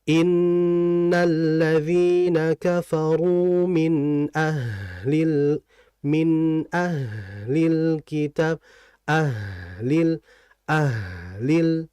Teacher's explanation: Maksudnya sama-sama mengalir. Bedanya kalau H ini alirannya cukup lama dibandingkan yang nun. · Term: huruf hams